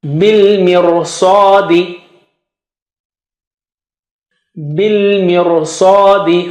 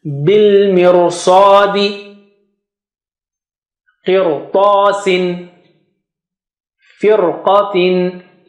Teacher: So if you say bil mirsa, it is too much effort. To make it natural, you just make Ra thick.